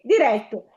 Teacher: è l'accento aperto nell'E